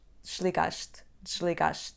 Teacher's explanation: Na palavra desligaste, também a letra E vai cair e dizemos desligaste, desligaste.